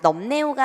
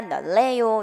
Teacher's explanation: 리을, 니은 있으면 압도적으로 리을이 이기기 때문에 자 니은이 리을로 교체됩니다.